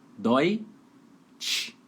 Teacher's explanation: Como tem um T, né? Então tem que ser o T mais chiado.